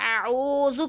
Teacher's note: واو ساکن سے پہلے پیش تو واو مدہ کہلاتا ہے، اور واو مدہ کو ایک انگلی کی مقدار کھینچ کے پڑھتے ہیں